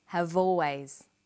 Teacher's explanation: People have always. Notice how in conversation we link the final consonant sound v with the initial vowel sound